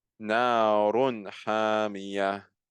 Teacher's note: I'm clearly pronouncing the tanween at the end. Why? Because there's a throat letter coming after, and thus we have al-idhar.